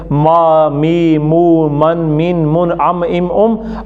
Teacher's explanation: माँ होंठों का बैरूनी हिस्सा आपस में जुड़कर खुल जाता है